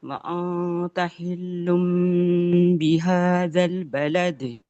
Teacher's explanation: اس کے بعد با پر فتحہ، ایک حرکت لام پر، ایک حرکت دال پر، فوراً سے قلقلہ